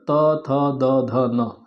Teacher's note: त वर्ग पूरा पूरा, ल और स, ये दंत के द्वारा उच्चारित होते हैं, तो इनका उच्चारण स्थान दांत माना जाएगा।